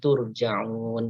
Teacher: Tur ini roknya dibaca tafkhim, turja'un ya, mad arid lis sukun ya.